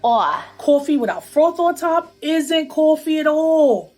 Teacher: what we call a raised vowel in words like thought and cloth